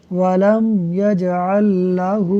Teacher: یہاں ہا کے اوپر الٹا پیش یعنی کھڑی حرکات ہے، اس لیے ہا کو ہم نے کھینچ کر پڑھا۔